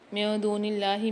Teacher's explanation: اللہ کے لام کو باریک پڑھیں گے کیونکہ اس سے پہلے زیر آ رہی ہے · من دون اللہ میں نون ساکن کے بعد دال آ رہی ہے اخفاء مال غنہ کے 15 حروفوں میں سے، یہاں پر بھی غنہ کر کے پڑھیں گے